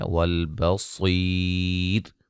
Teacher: وقفاً را باریک پڑی جائے گی